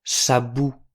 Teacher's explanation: on prononce bien « sabon » en insistant sur la dernière syllabe